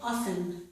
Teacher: This is often, but I did not pronounce the T in this word. Some people pronounce it, but many others do not, okay? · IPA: / ɑf- ən /